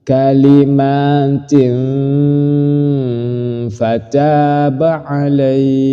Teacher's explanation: ini kalimatin ini tanwin disamarkan ketika mau masuk ke ikhfa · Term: Ikfa